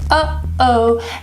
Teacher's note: The sound is a glottal stop, and you can feel it inside your throat.